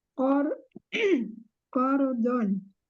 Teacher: rnya dibaca tebal karena ro sukun sebelumnya fathah